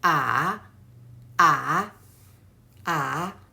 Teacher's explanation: And the third tone, there is a turn in the third tone.